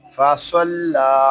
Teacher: صاد کو پر پڑھیں گے اور لام کو باریک پڑھیں گے